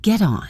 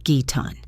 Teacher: This is when a word ending in a consonant sound is followed by a word beginning with a vowel sound. The consonant sound essentially jumps over to the next word making them sound like one. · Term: linking or catenation